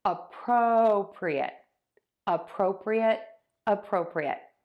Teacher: Appropriate. And I am stressing the syllable pro.